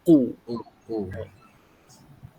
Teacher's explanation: pastikan ku ni betul-betul bunyi dia baris depan tu. Munculkan mulut.